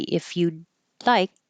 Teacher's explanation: you're not going to hear this D because the D and the L are in the same position. So just hold the D.